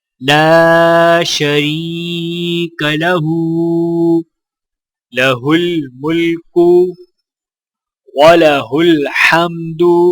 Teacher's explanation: ہا کے اوپر الٹا پیش ہے تو لہٰذا ہا کو بھی ایک الف کے برابر کھینچ کر پڑھا جائے گا